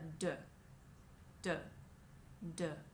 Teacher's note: d is an explosive consonant where you cut off a part of the air and then let it out